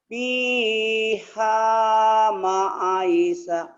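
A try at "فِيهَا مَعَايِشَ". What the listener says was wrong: Bukan, A-nya panjang nih Pak, dengerin. Fiha ma'aisha. Pendek. A-nya panjang.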